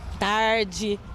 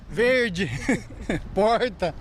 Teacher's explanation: o sotaque daqui é o r bem puxado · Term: R caipira